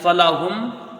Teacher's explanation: میم کو ظاہر کر کے بغیر غنہ کے جلدی پڑھا جائے گا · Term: اظہار شفوی